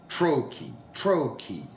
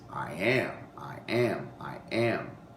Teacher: So it's the stress syllable at the beginning of the word followed by an unstressed syllable. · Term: trochaic